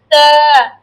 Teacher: জিভ আর আগাটা উপরের সামনে দুই দাঁতের গোড়ার সঙ্গে লাগিয়ে তারপর বলতে হবে তা।